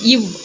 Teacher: கீழ் இதழும் மேல் வாய் பல்லும் இணைவதால் பிறக்கும் எழுத்து வந்து இவ். ஓகேவா?